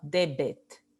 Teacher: en latín sí se pronunciaba con la oclusiva b, debet